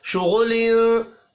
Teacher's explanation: फी शुगुलिन, फी या मद्दा है, एक अलिफ के बराबर खींच कर पढ़ेंगे। शुगुलिन गैन हुरूफ मुस्तअलिया है, पुर पढ़ा जाएगा। तनवीन के बाद फा आ रहा है, इख्फा हकीकी होगा।